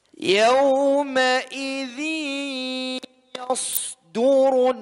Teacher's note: Idgham bi gunnah. Yawma'idhi ditahan minimal 2 harakat